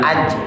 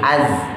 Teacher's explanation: Az jangan naik, kalau naik nanti jadi jim ya, jangan aj tapi az. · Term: zai